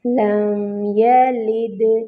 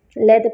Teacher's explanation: لم یلد، لام کے نیچے کسرہ ہے، لام کو جو ہے وہ باریک کریں گے اور دال پر کلکلا کریں گے۔ یلد، یہ لید نہ ہو جائے، لی ہے نا، باریک کریں گے، لید پڑھیں گے تو یہ غلط ہو جائے گا۔